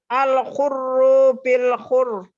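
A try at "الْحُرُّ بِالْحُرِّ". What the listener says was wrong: Kurang. Ru pertama pendek. Al-hurru bil hur.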